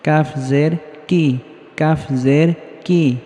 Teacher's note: কাফ উচ্চারণের সময় হালকা বাতাস বের হবে কাফ জের কি কাফ জের কি কাফটা পাতলা ভাবে উচ্চারণ হবে